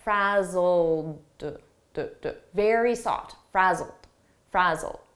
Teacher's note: Frazzled, here it's a past simple ed verb, but the pronunciation is a very soft D, and you almost don't hear it.